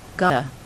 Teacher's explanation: The T is going to slide over on the A. It's also going to become more of a flap and not a T sound